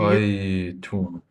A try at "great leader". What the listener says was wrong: yeah, but of course we still have to finish low because most phrases finish low. So we'll say great leader. Okay, great leader.